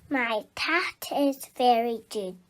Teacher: very good so this little girl's cat is very good and she swapped a t sound and a d sound instead of the k and g sounds this is very common in the under fives and it doesn't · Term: front sound